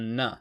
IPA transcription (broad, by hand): n